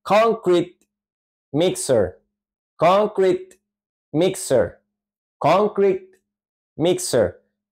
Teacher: en ambas palabras la sílaba tónica la acentuación iría al principio ahí tenemos que subir Nuestra fuerza Al momento de pronunciarlas muy